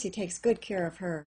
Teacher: her at the end of the sentence did not have a silent H because I said that word with stress